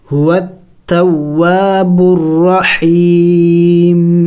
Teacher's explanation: وقف میں ہم نے اس میم کو سائلنٹ کرنا ہوگا یعنی ساکن کرنا ہوگا ، هو التواب الرحیم، آخر میں میم کی آواز نکلنی چاہیے،